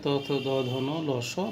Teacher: এছাড়া আছে ত, থ, দ, ধ, ন, ল, স, দন্ত, অর্থাৎ জিহ্বার উপর সামনের অংশটুকু দন্ত, অর্থাৎ দাঁতে গিয়ে স্পর্শ করে, তাই উচ্চারণ স্থান অনুযায়ী নাম হচ্ছে দন্তবর্ণ।